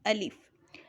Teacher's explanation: الف ہمارے منہ کے خالی حصے سے ادا ہوتا ہے